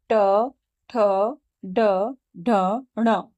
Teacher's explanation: हमारी जो जीभ है वह मुर्धा को टच कर रही है। मुर्धा तालू के पास होती है। आप इसे बोल के देखें तो आपको पता चल जाएगा कि आपकी जबान या आपकी जीभ या आपकी जी्हा किस पार्ट को टच कर रही है। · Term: ट वर्ग